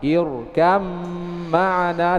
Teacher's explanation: dibaca langsung masuk ke huruf mim, ba tidak terbaca lagi, huruf ba tidak terbaca lagi. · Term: idgham